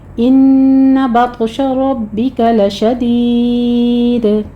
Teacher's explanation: ان پہ غنہ کرنا ہے تو آپ کو پر پڑھنا ہے، را کو بھی آپ نے پر پڑھنا ہے، با کے پر تشدید ادا کرنی ہے